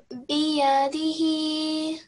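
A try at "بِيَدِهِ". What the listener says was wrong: Just make the ya a tiny bit longer. Biyadihi.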